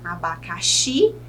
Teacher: a sílaba tônica é a última, o Xi